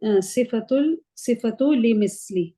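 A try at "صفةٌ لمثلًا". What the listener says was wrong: सिफतु क्यों, सिफतुन ली मसलन, ली मसलन।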